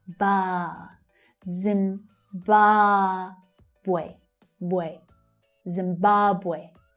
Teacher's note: The second syllable is the strong one.